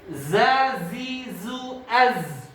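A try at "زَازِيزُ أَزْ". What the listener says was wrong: Ada yang kelamaan? Az. Kelamaan.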